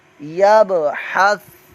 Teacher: کلمہ یا با زبر یب، ح سا زبر حس، یب حس، یا پر حرکت ہے، با ساکن قلقلہ ہو رہا ہے